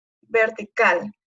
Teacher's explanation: y la más fuerte está en la última sílaba por ejemplo vertical su sílaba tónica es cal porque suena es la que suena más fuerte